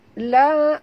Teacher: kena bunyikan hamas pada huruf ta, ya, kalau kita berhenti. Tapi kalau kita wasal sambung, dia jadi hukum lain, iaitu idgham ma'al gunah, ya.